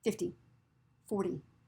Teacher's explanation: tip of your tongue is hitting the top of the roof of your mouth very quickly and coming back down. So we don't say the T sound, but we say the D sound. · in the 10 number, the T sounds like a quick D.